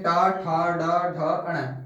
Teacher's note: ये ट वर्ग वाले सभी व्यंजन हमारे मूर्धन्य व्यंजन, जिनमें जेवा हमारी मुड़े, वो मूर्धन्य व्यंजन कहलाते हैं।